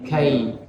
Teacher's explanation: Kemudian kaidahum, di situ ada lin. Ya, harus kai harus diucapkan dengan ringan dan tidak boleh diganti dengan huruf hamzah. Kaidahum tidak, tapi kai.